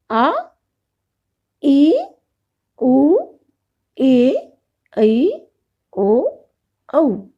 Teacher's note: जिन स्वरों के उच्चारण में ह्रस्व स्वर से दुगुना समय लगता है उन्हें दीर्घ स्वर कहते हैं।